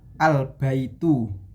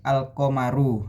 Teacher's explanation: terdapat alif dan lam dan harus dibaca jelas sebelum masuk ke huruf qamariyah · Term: idhar qamariyah